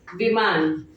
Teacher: छोटी ई की मात्रा में लघु स्वर का उच्चारण होता है जिसमें हमें प्रेशर कम देना पड़ता है।